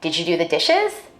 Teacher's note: In a study, I found that African American speakers may be more likely to ask a yes-no question with a level tone or a falling tone. For white speakers, we expect a rising tone in questions like these.